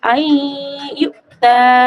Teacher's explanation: যেমন নিচে ইদগামে ইয়া দেওয়া আছে, আই ইউতা, হামজা ইয়া জবর আই, নুন সাকিনের পরে ইদগামের অক্ষর ইয়া এসেছে, তাই এখানে একালি পরিমাণ গুণনা সহ পড়বো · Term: ইদগামে বাগুন্না